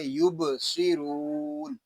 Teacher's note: صاد یہ حروف مستعلیہ میں سے ہے، اس کو پر یعنی موٹا پڑھیں گے. را کو پر پڑھیں گے کیونکہ را کے اوپر پیش آ گیا ہے.